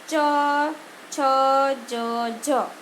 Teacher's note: તાલવ્ય એટલે કે તાળવામાં હવા અવરોધાય